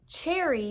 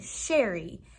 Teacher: the ch is a very short like burst of air, ch, ch, and sh is slower